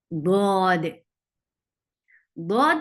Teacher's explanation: زبان کا مخرج سے ٹکرانے کے بعد آگے کی طرف جانا، ذرا سا سلپ ہونا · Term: استطالہ